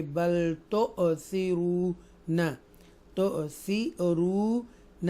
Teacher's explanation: تو یہ حمزہ ساکن ہے تو اس کو تھوڑا ٹوچ کریں گے، جھٹکے سے پڑھیں گے